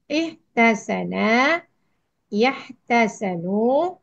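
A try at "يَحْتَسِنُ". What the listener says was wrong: Maklumnya mudhari belum benar. Ihtasana.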